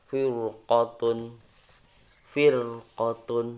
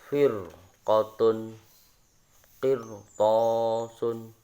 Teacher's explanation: ketika ada ro sukun, sebelum ro sukun itu ada harokat kasro, dan sesudah ro sukun itu ada huruf isti'la, maka dibaca tebal ya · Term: dibaca tafkhim